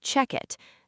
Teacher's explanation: The k sound at the end of check slides over to the vowel i in it, making it sound like check it.